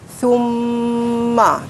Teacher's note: Okay, kita kena dengungkan dekat mim tu. Summa 2 harakat. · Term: wajibul gunnah